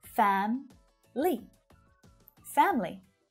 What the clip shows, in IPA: 'fæm li